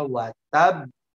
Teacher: cara bacanya ditekan kemudian dipantul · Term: qalqalah